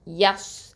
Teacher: அல்லி ரெண்டு அலிஃப் நீட்டனும் யாமத்து அடுத்ததா யா பத்ஹா ஸ்வாது சுகூன் யஸ் இந்த ஸ்வாத் வந்து ஹெவிங்கிறதுனால நல்லா அழுத்தமா ஓதுறோம்